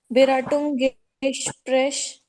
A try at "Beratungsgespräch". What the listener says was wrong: There are 2 G's, I've not heard both of them. I need to hear both the G's there. Can you pronounce both the G's? Why did you put the S?